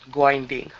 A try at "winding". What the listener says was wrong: instead of ging give me a good w